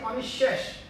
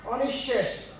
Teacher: অনেকেই এটা বিসর্গের জন্য হ ভাবে, এখানে হ উচ্চারণ হবে না, এখানে ওই বর্ণটা ডাবল উচ্চারণ হয়ে যায়।